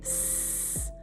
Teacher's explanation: Now try s like in snake. No buzz. That's just air. That's a voiceless sound.